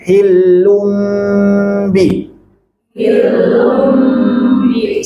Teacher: Kalau hillum dirapatkan, hillum bi, hillum bi, sempurna masuk hidung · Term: Iqlab